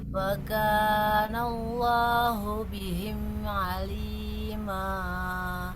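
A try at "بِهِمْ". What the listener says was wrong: Coba boleh diulang Ibu, haknya jangan bihim. Bihim tidak terlalu hi ya. Wa kana Allahu bihim alima.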